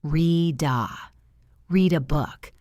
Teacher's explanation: The word read ends in a D, and A is a vowel sound. Connect them.